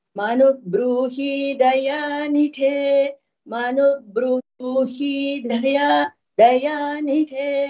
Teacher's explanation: daya da is alpa prana nidhe dha is mahaprana